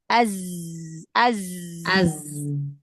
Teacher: sofir itu ee keluarnya dari celah antara gigi seri atas dan gigi seri bawah. Jadi ujung lidah jangan menutupi ya.